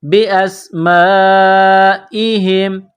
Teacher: بی اسمائہم، میم الف مد زبر ما، حمزہ زیر ای، بی اسمائی، ہا میم زیر ہم، بی اسمائہم، یہ بڑا مد ہے، اس کو 4 الف کے برابر کھینچ کر پڑھیں گے۔